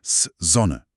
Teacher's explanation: Dieses S am Wortanfang summt. Sonne. Es vibriert ganz weich im Mund, wie eine kleine Biene.